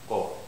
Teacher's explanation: See, o has lip rounding